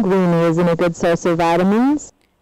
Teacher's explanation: the sentence so this is a contradiction tune which is have a fall in the beginning unlike all the previous sentences and then low and then a final Rising Trend at the end